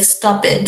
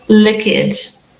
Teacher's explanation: we Brazilians usually add the e sound at the end of almost every word